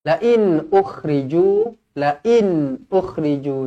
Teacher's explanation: nun yang bertanda mati izharu halqi, jelas dan terang.